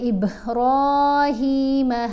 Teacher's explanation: یہاں با کے اوپر ہم نے کلکلا بھی کرنا ہے، را کو موٹا بھی پڑھنا ہے، لمبا بھی پڑھنا ہے، ہا کو بھی لمبا پڑھنا ہے